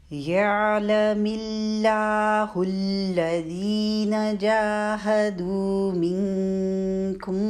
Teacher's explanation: منکم پہ جو اخفاء آیا ہوا ہے بالکل باریک رکھنی ہے، اخفاء کی آواز موٹی نہیں ہونی، کیونکہ نون ساکن کے بعد کاف آیا، کاف باریک حروف میں سے، اس لیے اخفاء کی آواز کو بھی باریک رکھنا ہے۔